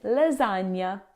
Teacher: In English we usually pronounce the g and n separately like in pregnant. But in Italian gn creates a single soft nasal sound. A bit like saying the n y in canyon or the n sound in onion.